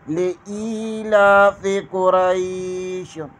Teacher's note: لإیلاف، فا کے نیچے زیر، لإیلاف قریش، قاف کے اوپر پیش اور کاف کو پر پڑھیں گے، را کے اوپر زبر اور را کے آگے یا ہے، یہاں پر یا لین ہوگا۔ لإیلاف قریش، لکھا تو قریشن ہے لیکن وقف کی وجہ سے قریش پڑھیں گے۔